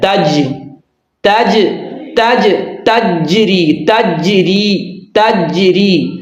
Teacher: بعض لوگ یہاں قلقلہ نہیں کرتے جبکہ یہاں جیم پر قلقلہ ہے